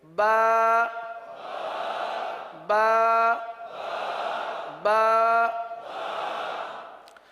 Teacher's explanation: کہاں سے ادا ہوگا؟ با ہونٹوں کے، دونوں ہونٹوں کے تر حصے سے ادا ہوتا ہے